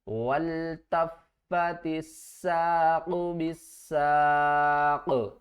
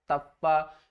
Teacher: تشدید کی وجہ سے تا کے اوپر سختی کریں گے، فا کے اوپر سختی کریں گے اور فا کو 2 مرتبہ پڑھیں گے۔ کس طرح، تا فا زبر تف، فا زبر فا، تفا۔